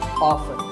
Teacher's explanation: Now, strictly speaking, often is not wrong, but the more common pronunciation is with the T silent